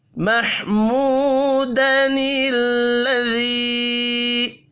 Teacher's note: واو مدہ ایک الف کے برابر کھینچ کر پڑھیں گے